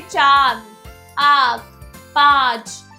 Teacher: इसका उच्चारण नाक और गले दोनों से होता है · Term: अनुनासिक